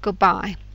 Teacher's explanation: the D in good starts sounding like the B in bye because it's simply too hard to move your lips from D to B.